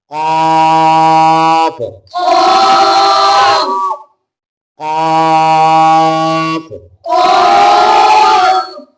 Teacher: یہ جو نقطوں والی قاف ہے, اس کی آواز آپ نے حلق سے نکالنی ہے اور اسے لمبا کر کے پڑھنا ہے. قاف قاف جی کاف نہیں پڑھنا, قاف پڑھنا ہے.